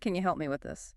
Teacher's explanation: And help me kind of links together. The P sound might be soft, so it sounds almost like help me.